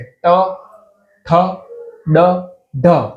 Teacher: ટ, ઠ, ડ, ઢ માં જ્યાં તમારી જીભ અડે છે ને એને કહેવાય મૂર્ધા. એ આપણા દાંતથી થોડીક ઉપરની જગ્યાએ ત્યાં અડે છે.